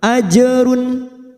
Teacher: Nu watat taqu, watat masuk kata huruf ta yang bertasdid, watat ta, watat taqu, duma bertemu waw sukun dua harokat, falakum, falakum mim sukun bertemu hamzah, kita baca jelas idhar safawi, falakum ajrun, jim sukun qalqalah sugroh yang mati asli di tengah kalimat kita pantulkan, ajrun, run duma tanwin duma tain yang bertemu ain idhar halki, kita baca jelas tanpa mendengung, ajrun, ajrun azim, azim.